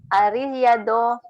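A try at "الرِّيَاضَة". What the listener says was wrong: Bukan Ar-Riyado, ya-nya panjang. Ar-Riyado.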